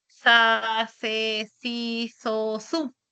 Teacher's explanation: la lengua está atrapada entre los dientes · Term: interdental